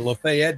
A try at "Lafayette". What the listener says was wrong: Lafayette. You over enunciate the T's. Remember, you just act like you got molasses in your mouth and everything goes all right.